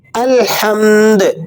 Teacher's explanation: الحمد وقفاً الحمد الحمد. دال پر جب آپ وقف کریں گے تو دال ساکن ہوگی اور دال ساکنہ پر آپ نے قلقلہ بھی ادا کرنا ہوتا ہے